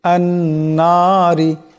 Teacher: নুনের উপর তসদিদ আসছে তসদিদকে এক আলিফ পরিমাণ গুন্না করিয়া পড়তে হবে নুন মুশাদ্দুদের গুন্না হবে রাজেরি আন্নারি রা নিচে জের আসছে রাকে